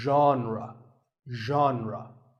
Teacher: Pay attention to the first sound. It's like sh, but you have to put your voice into it.